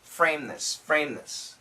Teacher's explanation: this m is similar to the n and it will cancel the th so what we have is framess so when we say it